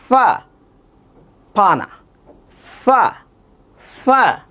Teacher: ফা যখন বলবো ফা এখানে দাঁতটা এই ঠোটের মধ্যে লাগবে